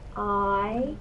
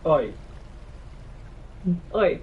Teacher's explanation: In the West Country accent, this is more like oi. It's more rounded with the or vowel rather than the ah vowel at the beginning. So in standard British English we have I, but in West Country we have Oi.